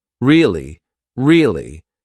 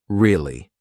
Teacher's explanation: conversation with upward intonation really really tell me more or to show that you're not so interested in the conversation with downward intonation